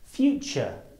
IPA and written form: ˈfuːtʆə (future)